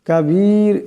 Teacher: রা সাকিন হয়ে যাবে এবং র আওয়াজটিকে পাতলা করিয়া পড়তে হবে